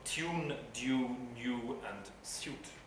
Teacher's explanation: in all of those pronunciations, you hear a glide y, that approximate, that palatal approximate y, in between the consonant and the vowel